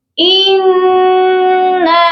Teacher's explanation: نون مشدد ہے، اس پر غنہ کریں گے